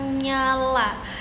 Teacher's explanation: Nah, coba teman-teman perlahan dan rasakan ee bagian tengah lidah. Bagian tengah lidah kalian ini menempel di langit-langit mulut